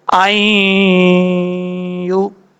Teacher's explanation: نون ہے، جب حمزہ کو یا سے کنیکٹ کریں گے، یہاں پہ ادغام جر ملون ہو رہا ہے، نون ساکن کا ادغام، تو ایک الف کی مقدار غنہ کریں گے